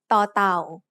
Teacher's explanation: The sound ต ่ อ เ ต ่ า makes as an initial consonant is the, which is between an English D and T. In technical terms, the sound of ต ่ อ เ ต ่ า is an unaspirated T. As a final consonant, it also makes a T stop.